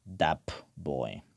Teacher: one sound becomes similar to its neighboring sound in terms of place of articulation